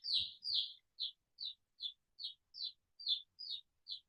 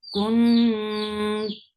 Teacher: Your tongue should be very close to the makhraj of ta, and you're keeping the gunna sound into your nose. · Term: ikhfa